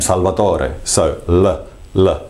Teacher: in my own name Salvador so l l very very light the tip of the tongue goes from the behind the front uh top teeth and just drops gracefully to the uh to the behind the bottom teeth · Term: light L